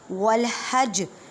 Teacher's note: جب وقف کریں گے تو جیم کو ساکن کریں اور یہاں پہ قلقلہ ہوگا